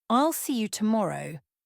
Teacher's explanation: the words see and tomorrow are stressed, while I and you are quick and soft.